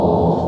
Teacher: bukan ghulamun lagi, tapi ghulamu langsung masuk ke wau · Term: idgham bighunah